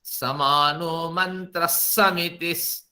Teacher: ये जो विसर्ग है ये स आधा स बन करके इसी साथ चला जाता है